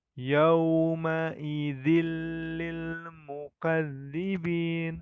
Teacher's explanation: ada yang berwarna kuning nah disitu terdapat hukum bacaan Idgham Bilaghunnah tanwin bertemu dengan huruf lam maka dibacanya dengan tanpa dengung di langsung ke huruf lam nya